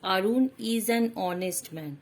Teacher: Here the adjective is honest is starting with the consonant H, but here also the H is silent, and it seems that the word honest is starting with the vowel O